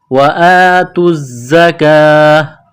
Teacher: تا کو زا کے ساتھ ملانا ہے، پلس کرنا ہے. زا کے اوپر تشدید ہے تو زا کو دبانا ہے، سختی کرنی ہے. زا میں سیٹی کی آواز پیدا کریں گے